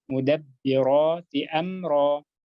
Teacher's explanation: jangan sampai mudab kedengaran huruf P.